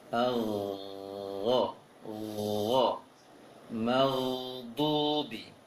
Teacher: Al-gha, seperti yang disampaikan di awal tadi, ghain itu berbeda dengan kho. Bedanya, kalau kho ditiupkan angin keluar, kalau ghain ditahan angin di tenggorokan atas